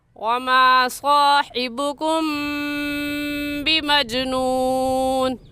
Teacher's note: کیونکہ میم ساکن کے بعد با آ گیا ہے، اس لیے اس میم ساکن پر ہم غنہ کریں گے ، اور غنہ ایک الف کی مقدار ناک میں آواز چھپانے